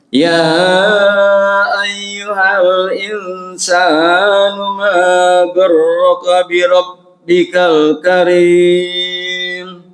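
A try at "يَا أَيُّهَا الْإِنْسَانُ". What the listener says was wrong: Insannya kepanjangan mat. Insanu ma saknya jangan panjang sa.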